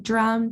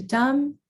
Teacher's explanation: And then our last example for cluster reduction, we go from drum to dumb. And here you can see the deletion of the consonant R